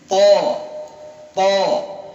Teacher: To tekan, dia lengket ke langit-langit ya. Terangkat bahkan lengket, ditekan ujungnya ke pangkal gigi, kena gigi.